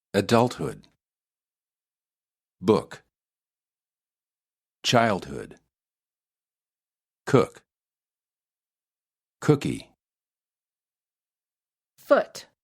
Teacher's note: the sound is relaxed, with the lips almost neutral, just very slightly rounded